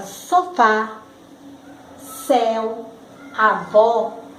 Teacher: errado os sinais diacríticos aquele que mete uma ideia de diferenciação agudo ele tem o timbre aberto · Agudo, ele tem o timbre aberto. Na palavra sofá, céu, avó, notamos que o timbre é aberto.